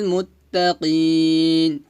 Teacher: এখানে মুত্তাকিন হবে না, মুত্তাকিন বলতে হবে, কফ শব্দ করে বলতে হবে, মোটা করে